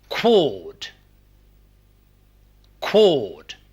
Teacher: the lips are rounded in quod much more than these are in aw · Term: back vowel